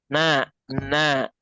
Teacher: Nun ini keluar sekali lagi nun keluar dari ujung lidahnya